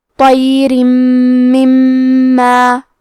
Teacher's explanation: کلمت مما میں میم پہ تشدید ہے تو ہمیں 2 حرف کے برابر میم کو پڑھنا ہے